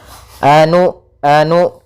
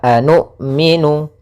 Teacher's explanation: Maka usahakan ketika melafalkan hamzah sukun itu memiliki sifat yang mana hamzah memiliki sifat jahar dan sifat syiddahnya, maka tertahan nafas dan tertahannya suara kita